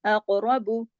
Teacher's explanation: अक़रबू, लेकिन बा को बारीक पढ़ेंगे और इतना ज्यादा लंबा नहीं करेंगे, सिर्फ एक हरकत, बा पेश बू।